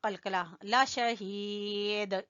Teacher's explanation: ذَلِكَ لَشَهِيدٌ، ہا کو کھینچیں گے یا مدہ کی وجہ سے اور دال کے اوپر قلقلہ